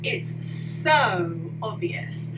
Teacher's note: So with my long vowel sound, I'm emphasizing the so, like it's really like big